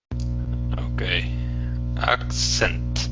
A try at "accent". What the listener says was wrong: Yeah, get that K in there. Accent. So you're saying accent. So you're not pronouncing the K. So it's accent, accent.